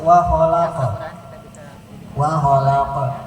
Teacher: Tipis saja. Karena yang qalqalah itu qaf bukan hamzah.